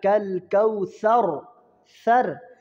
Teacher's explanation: را ساکن ما قبل فتحہ یعنی را موٹی ہوگی